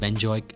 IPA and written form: bɛnˈzoʊ.ɪk (Benzoic)